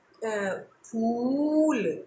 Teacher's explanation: जब हम बोले फूल, तो फूल हम लंबा खींचे या देर तक बोले फ पे ऊ की मात्रा, तो वो दीर्घकार है।